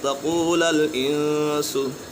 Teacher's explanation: مد منفصل ہے اور حروف مدہ کے بعد حمزہ دوسری کلمے میں ہے